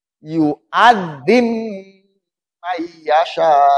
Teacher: dimatikan dulu si ba-nya sebelum dimasukkan. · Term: idgham mutajannisen kabir